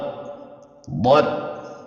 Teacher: Huruf dot ini keluar dari sisi lidah yang memanjang dari pangkal lidah hingga ke ujung lidah, dan pada saat itu juga bersentuhan dengan gigi geraham, baik yang sebelah kiri ataupun yang sebelah kanan.